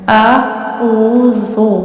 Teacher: دال والا زال ہے یعنی آپ نے اسے نرمی سے پڑھنا ہے